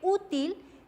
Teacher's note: lleva la sílaba tónica en la penúltima sílaba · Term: palabras graves o llanas